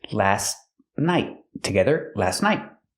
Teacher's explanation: The T in last is a stop T, but you don't really hear it because it's between consonants.